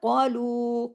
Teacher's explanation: काफ heavy लू को ज्यादा खींचना है मद की वजह से